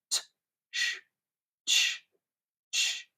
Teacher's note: a sort of combination of the plosive t with the fricative sh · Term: double articulations